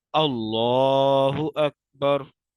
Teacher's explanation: लाम को मोटा पढ़ना है क्योंकि यहाँ पे तख्फीम हो रही है